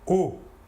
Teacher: Alors que pour le O, qui n'est pas nasal, vous ne sentirez pas d'air passer sur votre doigt. O. L'air sortira entièrement par la bouche.